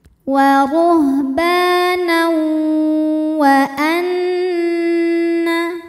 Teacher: Tanwin itu nun sukun juga ya. Jadi saat masuk dari tanwin ke waw itu tidak sempurna karena masih ada bunyi dengung dari huruf pertama yang terbawa. Artinya ini secara praktek idgham bigunahnya idgham bigunah yang naqis, masuknya tidak sempurna.